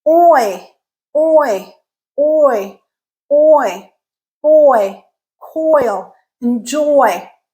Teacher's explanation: so you're going from aw to I, oi, oi. You can feel your tongue moving inside your mouth to get from one sound to the next sound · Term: diphthong